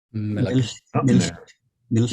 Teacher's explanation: So he's got that little bit of epenthesis, right?